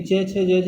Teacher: तालु की बात करें तो ई च वर्ग यानी च छ ज झ ये, और य और श ये तालु से होते हैं